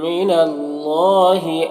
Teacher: یہاں پر اللہ کے لام سے پہلے نون کے اوپر زبر ہے تو اللہ کے لام کو پر پڑھیں گے